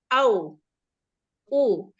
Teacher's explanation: makhraj huruf wau itu dari bibir au u jadi ada lubang kalau misalnya kita pakai jari mungkin